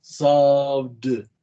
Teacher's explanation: Como una T al final, explosiva. Pero si tiene una vibración como sob, tiene que pronunciarlo como, no como T, sino como D